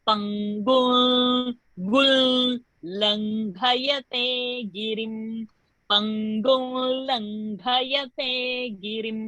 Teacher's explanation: Whenever a l comes, the previous anuswara is going to become l with the chandra bindu. L in the nose. L, when you say it in the nose, nasal, l.